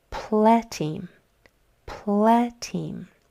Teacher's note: That E is not saying anything. So our sounds are pleteem, with that accent on the first syllable.